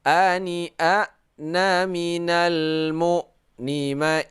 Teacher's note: Karena baris fathatain bertemu dengan hamzah, maka kita baca secara nyata, ya, secara idhar menyatakan, yaitu tidak berdengung.